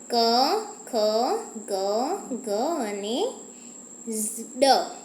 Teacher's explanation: જે વર્ણોનું ઉચ્ચારણ ગળામાંથી થાય તેને કંઠવર્ણ કહે છે